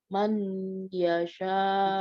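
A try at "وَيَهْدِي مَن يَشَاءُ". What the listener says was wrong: Bukan man yasha. Coba apa ya? Nun ketemu ya. Mai.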